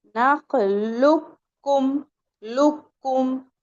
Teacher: तो हमें नखलुकुम नहीं पढ़ना है, हमें डायरेक्ट इस वाले काफ का, साकिन वाले काफ का मुतहर्रिक वाले काफ में इदगाम हो जाएगा। तो हम मुझे यूं पढ़ना है नखलुकुम लुकुम।